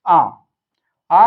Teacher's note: आ का उच्चारण जिह्वा के मध्य भाग से होता है